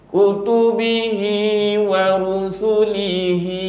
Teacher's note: kecil kasrah diikuti ya kecil dan damah diikuti dengan wau kecil bacaannya sama panjang iaitu dua ketukan ataupun dua harakat ataupun dipanggil dua Alif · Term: Mad Silah